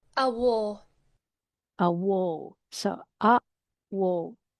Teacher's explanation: It's a front vowel. It's very open, but it's short.